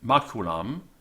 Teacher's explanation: notice that the M on the end is sort of a nasalized A